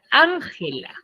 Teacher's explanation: ¿dónde tiene la mayor fuerza de voz Ángela? En an.